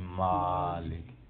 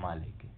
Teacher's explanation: کوئی میم کو طویل کرتے ہیں، کوئی اس کو طویل نہیں کرتے ہیں، فتح پڑھتے ہیں مالک، کوئی پڑھتے ہیں مالک، کھڑی زبر کی آواز دیتے ہیں۔